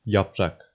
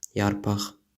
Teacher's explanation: In Azerbaijani, there's a tendency for side-by-side consonants to undergo metathesis. In other words, their order becomes reversed.